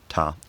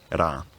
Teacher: this is a compromise between a voiceless plosive, ta, and a voiced tap, era. And it's still sometimes used in Australian English, so there's some precedent for it. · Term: voiceless taps